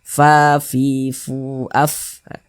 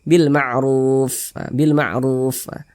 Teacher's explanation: Kemudian huruf fa itu adalah salah satu huruf yang memiliki sifat hamas. Jadi kalau kita mengucapkan huruf fa itu ada nafas yang mengalir ketika kita mengucapkannya.